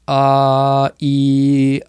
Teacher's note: It's not the tip, it's more the middle to the back part of the tongue.